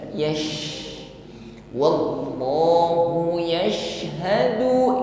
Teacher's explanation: fammi menyebar angin nafas di dalam mulut kita bukan sekedar yashadu bukan sekedar berdesis di ujung lidah Yas ya tetapi menyebar di dalam mulut kita